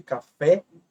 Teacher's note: Como, por exemplo, vou colocar aqui embaixo, café. Observe, a última sílaba ela é tônica, ou seja, é a mais forte, café, e é terminada em E. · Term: oxítona